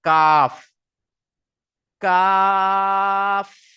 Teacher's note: জিভের গড়া হইতে একটু আগে বাড়িয়ে তার বারবার উপরের তালুর সাথে লাগিয়ে উচ্চারিত হয় কাফ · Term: কাফের মাখরাজ